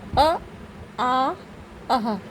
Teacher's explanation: अगर आप जब बोलेंगे तो आपका आभास होगा कि ये सीधे हमारे कंठ से निकल रहे हैं